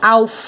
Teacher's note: A sílaba tônica, ó, é o fá